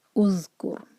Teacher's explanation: کیف کے پر ضمہ اور را ساکن ہیوی ہوگا کیونکہ را ساکن سے پہلے ہے ضمہ